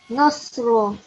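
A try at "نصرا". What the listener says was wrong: No, that's how you pronounce the sword, but not the seen. It should be you should be smiling when you say this. So Nasra. So yeah, that's when we have seen, but we have sword here. So let's pronounce the sword now. So Nasra.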